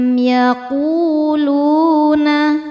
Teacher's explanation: Ku hukumnya mad tabi'i dhahiri karena ada waw sukun sebelumnya dhammah. Cara bacanya panjang 2 harokat.